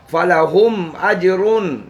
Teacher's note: मीम साकन को ज़ाहिर करके पढ़ेंगे, गुन्ना नहीं करेंगे। अजरुन जीम पर कलकला करेंगे। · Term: मीम साकन का इजहार